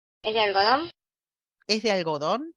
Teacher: como no hay otra sílaba después de la sílaba nuclear, no hay lugar para que se produzca el descenso, entonces obviamente solamente va a haber un ascenso y va a quedar como resultado un acento ascendente alto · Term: truncamiento